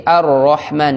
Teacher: itu ar-Rahman ro-nya itu tebal